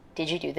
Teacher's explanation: African American speakers may be more likely to ask a yes-no question with a level tone or a falling tone. For white speakers, we expect a rising tone in questions like these.